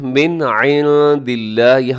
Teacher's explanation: اظہار کر دیں گے، مطلب آواز کو ناک میں نہیں لے کے جائیں گے